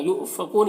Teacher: یہاں پر حمزہ ساکن ہے، جھٹکا لگے گا، کو میں واو مدہ ہے، اور یہاں پر وقف کریں گے تو نون کا زبر سکون سے بدل جائے گا، تو مد عارض وقفی ہوگا، تو اس طرح سے پڑھیں گے۔